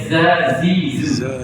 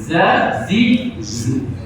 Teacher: Kita belajar dah sifat zal dengan zai. Zai ni bersifat dengan desir.